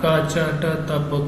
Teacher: यहाँ पर झनकार उत्पन्न नहीं हुई, इसका मतलब ये अघोष है, और यहाँ पर कम वायु भी निकली, इसका मतलब ये अल्प प्राण भी है। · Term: अघोष अल्प प्राण